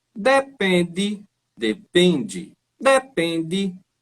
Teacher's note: Então ele começa mais agudo, ele faz o contrário do que eu fiz, ele começa mais agudo, desce, depois sobe um pouquinho.